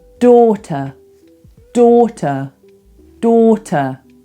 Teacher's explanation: That ER ending is actually what we call a schwa, a completely neutral sound.